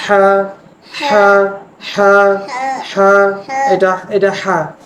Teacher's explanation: মুখ থেকে বাতাস বের হবে আর এটা হচ্ছে হলকের মাঝখান থেকে গলার মাঝখান থেকে শব্দটা হবে